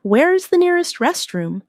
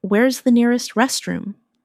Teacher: In fast speech, where is sounds like where's